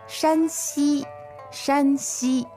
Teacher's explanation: Alright, so that's two first tones